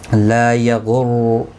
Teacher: لا الف مدہ ہے، ایک الف کی مقدار کے برابر کھینچ کر پڑھیں گے